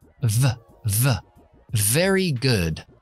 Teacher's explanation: b si no es lo que llamamos labio dental es decir ponemos los dientes superiores en el labio de abajo igual que la f pero activamos la voz